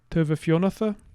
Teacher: We lose the u at the end of the word to a schwa